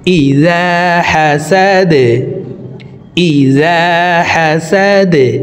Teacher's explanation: ইজা হাসা দাল জবর দা দালকে ওয়াকফের ক্ষেত্রে সাকিন করে ফেলবো দাল যেহেতু কলকলার হরফ নিচের দিকে ধাবিত করে ধাক্কা দিয়ে সাকিন করব